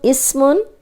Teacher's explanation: اس سین سیٹی والا ہے